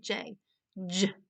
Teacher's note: you feel the voice your vocal cords vibrating that means that it's voiced